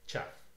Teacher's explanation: you take the affricate ch, the vowel a, and the voiceless labial fricative f to make chaff